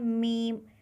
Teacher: दोनों होठों के साथ नाक से हवा निकलती है